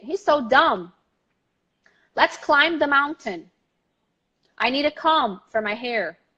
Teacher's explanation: So the silent B, you spell the B, but you never say it. You stop the word at the M